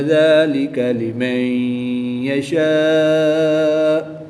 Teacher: الف سے پہلے شین پر زبر ہے، تو الف مدہ ہوگا۔ الف مدہ کے بعد حمزہ اسی کلمے میں ہے، تو یہاں پر مد متصل ہوگی۔ 3 سے 5 الف تک کھینچ کر پڑھیں گے۔